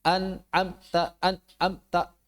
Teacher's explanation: memotong suaranya saat sukun, maksudnya gunahnya hilang 100%